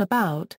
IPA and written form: əˈbaʊt (about)